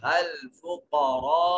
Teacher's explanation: रा मुतहर्रक मफ्तू है, इस वजह से मोटा और पुर करके पढ़ा जाएगा।